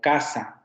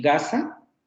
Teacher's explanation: el velar sordo y el velar sonoro